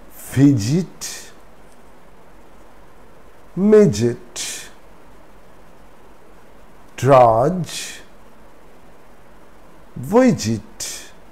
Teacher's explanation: when d is followed by g d remains silent and g has the sound of j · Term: silent d